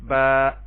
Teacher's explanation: اب آپ دیکھیں الف خالی، اس سے پہلے زبر، الف کو الف مدہ کہیں گے اور اس کو ایک الف کے برابر لمبا کریں گے